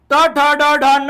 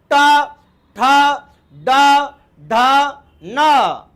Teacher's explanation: आपल्या जिभेचा शेंडा पाठीमागच्या बाजूला मोडपल्या जातो ट ठ ड ढ न जिभेचा मृदा होतो जी पाठीमागच्या बाजूला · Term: मूर्धन्य